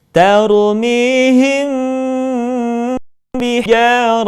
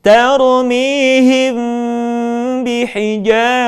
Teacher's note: ketika bertemu dengan huruf ba bibir tidak sempurna rapat melainkan agak direnggangkan sedikit sekali